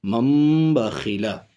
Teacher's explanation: سمجھ گئے کہ اگر تنوین نون ساکن کے بعد با آ جائے تو تنوین نون ساکن کے نون کو میم سے بدل کر پڑھیں گے، اس کو اقلاب کہتے ہیں.